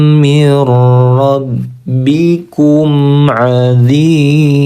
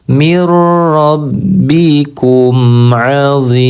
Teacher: Min huruf nun ketemu dengan huruf ro, kita baca menjadi idgham bila gunnah ya. Melebur tanpa disertai dengung, cukup ditekan tanpa ditahan terlalu lama